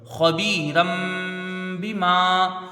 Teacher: میم میں الف مدہ ہے، اس کو کھینچ کے پڑھیں گے